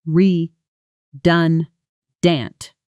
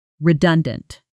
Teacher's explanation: Here's a phonetics note for you because redundant has a stress pattern that trips a lot of learners up. The stress is on the second syllable.